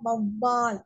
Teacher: மேல்வாயை கீழ் உதடு பொருந்துவதால் பிறக்கக்கூடிய எழுத்து இவ்வு